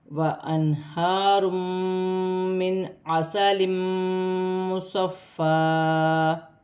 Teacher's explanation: یہاں بھی دو پیش کی تنوین کے بعد میں مشدد آ رہی ہے. ادغام مع الغنہ کا قاعدہ ہے، تنوین میں غنہ بھی کیا جائے گا، ملا کر بھی پڑھا جائے گا. نون ساکن میں غنہ نہیں ہوگا کیونکہ عین حروف حلقی میں سے ہے.